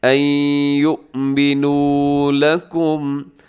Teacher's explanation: یؤمنوا اس کو جھٹکے سے پڑھنا ہے کیونکہ حمزہ ہے، حمزہ بشکل واو ہے، یعنی واو کے اوپر حمزہ کا جو علامت ہے وہ موجود ہے، تو جھٹکے سے آپ نے ان یؤمنوا لکم۔